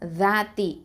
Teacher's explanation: அடுத்த வார்த்தை பாருங்கள், தாத்தி, தால் ஃபதா அலிஃப் சுக்கூன், த 2 அலிஃப் நீட்டணும். அது வந்து அதாவது மத்தல் அஸ்லி